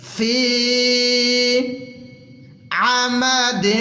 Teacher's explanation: آئین کو بالکل کلیئر حلق سے نکالیں گے